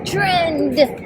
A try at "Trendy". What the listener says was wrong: The D's not silent. D's for dollar because you're going to spend every dollar.